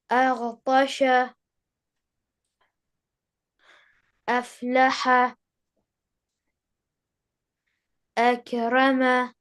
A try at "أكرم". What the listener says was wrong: Don't shake the letter that has sukoon. The letter which has sukoon means that the sound stops there. It doesn't move further to connect with the next letter.